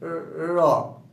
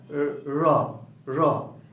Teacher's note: আমাদের যে জিহ্বা কম্পিত হয়ে এই ধ্বনিটা উচ্চারণ হয় জিহ্বার কম্পন থেকে, র। এটা জিহ্বার অগ্রভাগ বা একদম সামনের অংশটা, হ্যাঁ, র র, এখানে একটু কম্পনের সৃষ্টি হয় বিধায় এই ধ্বনিকে কম্পনজাত ধ্বনি বলা হয়।